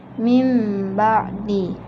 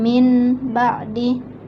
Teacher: nun sukunnya tidak dibaca jelas, bukan lagi min, melainkan berubah bunyinya menjadi mim. Mim ba'di. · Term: iqlab